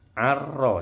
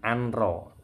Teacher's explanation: Idgham itu melebur. Jadi nunnya melebur yang dibaca ro tasydidnya. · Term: idgham bila gunnah